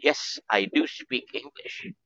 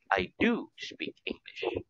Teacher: we put a heavy stress on the word do